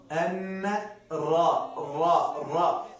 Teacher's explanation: د را مخرج له نون سره نږدې ده. د پورته وریو اخیرنۍ حصه چې په د ستوني خواته نږدې ده.